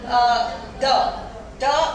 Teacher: द आपका voiced है और उसका प्लेस ऑफ आर्टिकुलेशन डेंटल है और उसका मैनर ऑफ आर्टिकुलेशन फ्रिकेटिव है